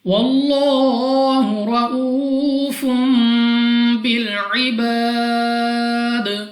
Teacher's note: یہاں پہ ہمارے پاس لام آف اللہ سے پہلے حرف پر زبر ہے, تو یہاں پہ لام آف اللہ کو پر پڑھا جائے گا یعنی اپنی منہ اور آواز کو کھول کر